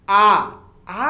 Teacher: आ कहने पर आपका मुंह पूर्ण रूप से खुल जा रहा है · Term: विपरीत यानी ओपन स्वर